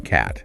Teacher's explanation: one so think about the a sound as in cat okay this is an open front vowel your mouth is pretty wide open and your tongue is towards the front